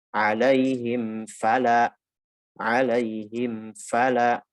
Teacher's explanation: Jelaskan dulu mimnya, sempurnakan dulu makhrajnya, menutup kedua bibir, lalu setelah itu masuk ke huruf waw atau fa.